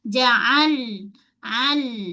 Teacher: Huruf ain dulu. Kemudian lam tepi hujung lidah dengan gusi gigi atas